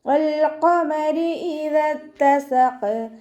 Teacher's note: ഖാഫ് ഇസ്തിഅലാൻ്റെ ലെറ്ററാണ്, തഫ്ഹീം ചെയ്തിട്ട് ഉച്ചരിക്കുക. റോക്ക് കെസ്റ വന്നതുകൊണ്ട് നമ്മൾ താഴ്ത്തി ഉച്ചരിച്ച് കൊടുക്കുക കേട്ടോ.